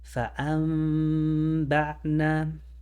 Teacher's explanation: You leave that space in between the lips, you hold it 2 counts, and you pronounce the meme. The reason this is done is because the Arab decided that it was too much work to go from the nun to the ba. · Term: Iqlaab